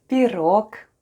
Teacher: The first sound is P, then goes I, then we have R, O, and G at the end. G at the end of the word is pronounced as K. And all together we have пирог, with the stress on the last syllable.